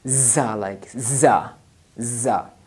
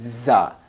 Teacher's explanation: when the tongue will touch to the upper side teeth root, so then this za will be pronounced. This will be hard and sticky, za, like za, za.